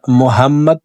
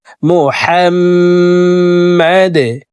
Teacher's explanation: হাফকে হলকের মধ্যখান থেকে উচ্চারণ করব।